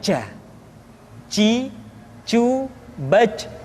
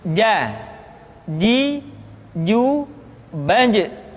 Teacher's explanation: dia tidak boleh mengalir nafas karena sifatnya al-jahr, lawan dari al-hamas.